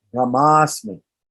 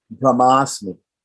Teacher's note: Two short A's, one at the end of Brahma, one at the beginning of Asmi, come together and make long A